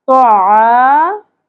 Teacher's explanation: طعام پر ہوگا, زبر ہے زیادہ نہیں کھینچنا. عین زبر کے ساتھ الف حرف مدہ ہے, ایک الف کے برابر کھینچیں گے